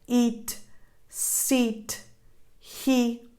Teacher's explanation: the tense E sound is identical to the E sound in Italian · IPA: iː